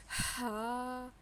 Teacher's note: زیادہ اس کو حلق سے نکالنا ہے